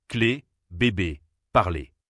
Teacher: Le son nez, c'est une voyelle fermée, plus tendue. La bouche est légèrement souriante, les lèvres tirées sur les côtés.